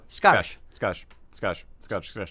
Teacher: say it fast and kind of push it together and say the ah instead of an oh